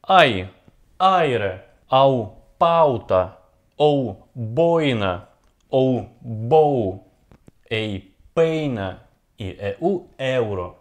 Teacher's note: плюс сильное а также слабое плюс слабое Вот пример нисходящих дифтонгов Почему нисходящие Потому что мы начинаем с ударения а всё остальное становится тише